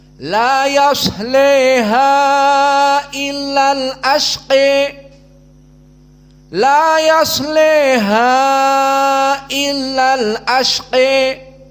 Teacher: alkubra jelas berbeda dengan al-imalah assugra maka dia mendekati kepada kasrh dari fathah condong kepada kasrah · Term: alimalah alkubra